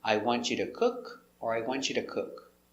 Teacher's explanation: we don't say to, we say t. Or sometimes duh, because it's between two vowels.